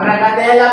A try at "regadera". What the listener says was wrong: Ang tamang uh, tawag doon, re- regadera. regadera. Oo, mali yung pagbigkas niya sa uli. Imbis na R, N yung sinabi niya, regadera. Regadera.